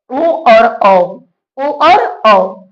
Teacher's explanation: इसमें कंठ और ओठ दोनों का सहारा लेना पड़ता है। यानी कि दोनों के मेल से ही हम लोग ओ का उच्चारण या औ का उच्चारण करते हैं।